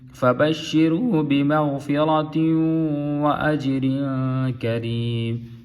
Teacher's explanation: غین کو پور کر کے پڑھیں گے، را کو بھی پور پڑھیں گے